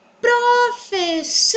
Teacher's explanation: estamos falando de uma palavra paroxítona, pois a sílaba tônica é a penúltima sílaba da palavra